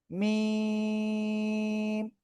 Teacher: এই অক্ষরটা দুই ঠোঁটের বাইরের অংশ শুকনো জায়গা থেকে উচ্চারিত হবে